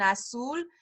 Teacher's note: Again, our U isn't quite as pronounced in English, but in Spanish, your lips should be rounded when you say the U